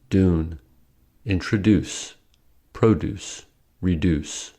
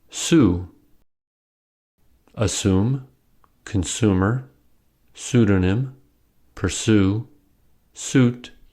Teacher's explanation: y dropping means pronouncing U as u in standard American English y dropping happens after certain consonants specifically d n z do